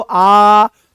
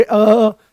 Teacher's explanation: आ बोलो आ तो पूरा खुला। बोलोगे अ तो आधा खुलता हुआ दिखाई देगा।